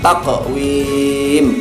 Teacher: Cara membacanya memantulkan huruf qalqalah dengan ringan atau tipis ya, ringan. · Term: qalqalah sugro